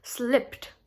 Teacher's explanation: remember this the ed of slipped is pronounced as the and the ed is not pronounced as separate syllable